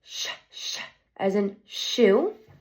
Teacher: The place is roof of mouth. The manner is fricative, and is an unvoiced sound.